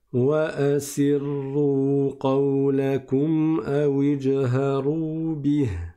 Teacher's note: C'est un ra qui est mufakham, il est emphatique. Et donc, on met, on le récite de façon grave.